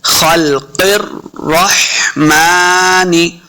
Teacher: खल, खल्क़िर, क़ाफ को रा के साथ मिलाना है, रा मुशद्दद है। खल्क़िर रहमानी, रा ज़बर हा, रा को हा के साथ मिलाना है, हा साकिन है, हा को सही तलफ़्फ़ुज़ के साथ हमने पढ़ना है।